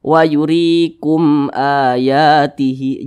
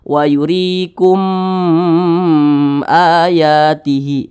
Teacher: maka hukumnya adalah izhar syafawi, dibaca jelas tidak berdengung. Maka mim di sini dibaca jelas.